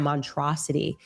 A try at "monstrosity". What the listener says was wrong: monstrosity. There's definitely an S in there.